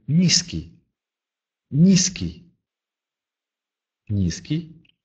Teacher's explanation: Если после «н» идет «и», то он произносится мягко.